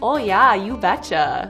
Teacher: if you're from North Dakota, you've got some long O's.